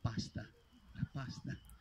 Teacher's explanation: la prima A è lunga e la seconda è corta